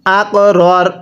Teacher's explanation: কফে যদি সাকিন হয় কলকলা করে পড়তে হয়